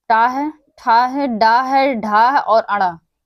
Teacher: मुरधन्य मुरधन्य या मूर्धा दोनों में से कोई भी तो ट है, ठ है, ड है, ढ है और ण। यह पांच हमारे हैं। यह मूर्धा से उच्चारित होते हैं।